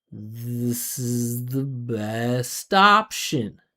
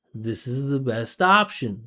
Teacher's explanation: we're going to link best and option. So it's going to come out as stoption